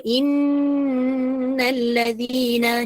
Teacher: Dia perlu dengan kadar 2 harakat gunnahnya.